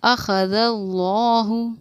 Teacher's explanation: لفظ اللہ کے لام کو ہم پوری یعنی کہ موٹا پڑھیں گے، اس لیے ہم نے پڑھا اخذ اللہ.